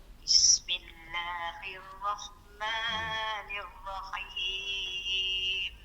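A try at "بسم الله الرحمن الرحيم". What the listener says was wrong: Jangan baca hi, kalau hi tu.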